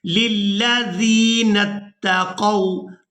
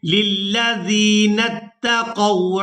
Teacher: زال کو یاء مدہ کی وجہ سے کھینچ کر ادا کریں گے